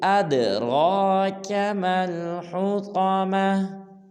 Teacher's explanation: اد میں دال کو قلقلہ کریں گے، بعض لوگ پڑھ دیتے ہیں ات، یہ بالکل غلط ہے، پڑھیں گے أَدْرَاكَ مَا الْحُطَمَةُ۔